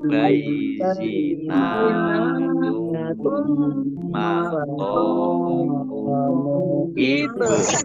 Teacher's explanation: Idgham masuk bi dengan gunnah mendengung, masuk dengan mendengung, yaitu mendengung mim, ditandai mimnya ada tasdidnya. Mim tasdid dibaca gunnah atau mendengung ditahan 2 harokat.